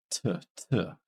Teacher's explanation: this is a voiceless sound there's no vibration in the throat and this is alve because it's being made at that Hard